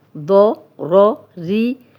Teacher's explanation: را پہ زیر ہے تو یہ باریک پڑھی جائے گی.